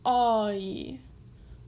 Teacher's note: it glides into the E sound